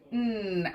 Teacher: our tongue is up that sound comes through our nose and our mouth and our voice is on